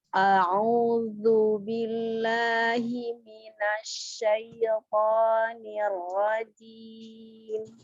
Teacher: A'udzu, keluarkan ya, zu, ujung lidahnya keluarkan sedikit. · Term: huruf zal